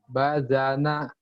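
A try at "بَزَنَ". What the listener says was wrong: Tadi sini bazana ya, bukan bajana, bazana. baza, zal. Jangan terlalu rapuh. Baza, zal. Bukan baja ya, Ada unsur D-nya.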